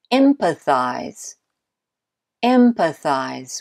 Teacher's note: the first syllable in empathize is the stressed one